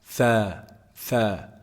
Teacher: Tha is actually pronounced from the tip of the tongue and the edge of the upper incisors.